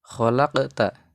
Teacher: hukum bacanya qalqalah karena ada huruf qof yang yang bersukun atau mati.